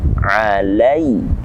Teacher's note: ada lam fathah bertemu dengan ya mati. Di situ kita baca mad layyin kembali. Alai, lembut cara kita membacanya.